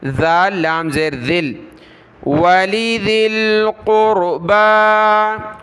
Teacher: ذال کو لام کے ساتھ ملائیں گے، ذال لام زیر ذل، اس یا کو نہیں پڑھنا، ذال پر زبان نکالیں